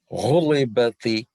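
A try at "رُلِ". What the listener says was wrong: Try to make the lam a bit more lighter. So not ruli, but ruli. So your lam, you're putting a bit too much emphasis on it. Try to just say li.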